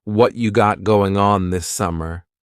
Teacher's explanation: Whatcha is what plus you becomes cha.